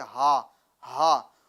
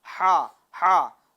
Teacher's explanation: جو دو چشمے والی ہا ہے ہوا اللہ میں وہ شروع حلق سے ادا ہوتی ہے, ٹھیک ہے, ہا ہا, اور جو احد میں ہا ہے وہ درمیان حلق سے ادا ہوتی ہے یعنی ہا ہا.